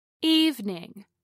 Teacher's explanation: Evening is pronounced with two syllables instead of three. Evening, not evening.